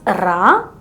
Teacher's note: tongue tip Rises towards the upper part of the mouth and pronounce with many fast touches when you spell out this letter your lips will be flat